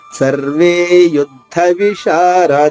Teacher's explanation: విశారదాహ షా దీర్ఘంగా, అలాగే రా తర్వాత దా దీర్ఘంగా, విసర్గ ఉచ్చారణ హ హ్రస్వంగా.